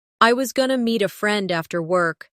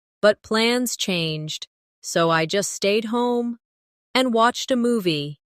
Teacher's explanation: Stress, meet, friend, work, plans, stayed, and movie while letting the smaller words flow quickly. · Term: rhythm